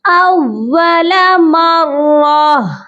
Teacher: نہ نون کی آواز شامل کریں گے نہ میم کو شامل کریں گے، بلکہ ہم ہا کو ساکن کریں گے اول مرہ۔ میرے ساتھ آپ بھی دہرائیے کیسے پڑھا جائے گا۔